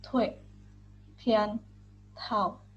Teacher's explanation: Yang keempat yaitu huruf T, dibaca TH. Suara ujung lidah atau apikal aspirasi. Lafalkan seperti konsonan TH dalam bahasa Indonesia.